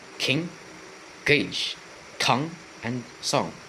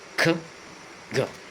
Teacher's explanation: Next is velar. The back of the tongue touches the soft palate, or velum. The sounds are k and g.